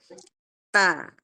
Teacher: Tepatnya adalah ujung lidah bertemu dengan gusi gigi seri atas. Ujung lidah bertemu dengan gusi gigi seri atas seperti ini ya, misalkan ini gigi, di bawah ini gigi, nah tempat tumbuhnya gigi, ya tempat tumbuhnya gigi itu adalah gusi. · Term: huruf ta